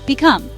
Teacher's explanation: 2 syllables. Stress is on the second syllable.